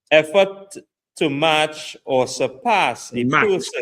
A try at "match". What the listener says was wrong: Match, not march. To match,